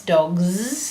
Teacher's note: A lot of kids want to write a Z there because that's dogs. They do hear a Z sound.